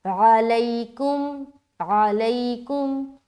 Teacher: نرمی کے ساتھ عین کو نکالنا حلق سے، کاف میم پیش، کم۔